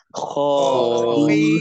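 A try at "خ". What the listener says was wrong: Ditebalkan lagi ketika kho, bukan kha, tapi kho.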